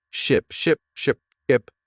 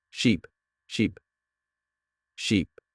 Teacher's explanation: Notice how your mouth moves differently. Ship has a short I sound like in sit and sheep has a long e sound like in sea